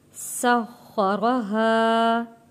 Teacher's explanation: یہاں پہ خا موٹا پڑا جائے گا اور خا کے اوپر تشدید ہے، سین سیٹی والا لفظ ہے۔